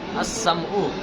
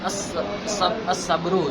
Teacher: لام تعریف کے بعد حروف شمسی میں سے کوئی ایک حرف آ جائے تو ہم سب سے پہلے لام تعریف کو حروف شمسی کی جنس کریں گے جوازن، اور جنس کے جنس میں ادغام کریں گے وجوباً.